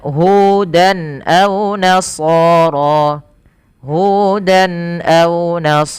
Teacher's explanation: pada lafal Hudan ini harus jelas suara tanwinnya tanpa ada penahanan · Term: izhar halqi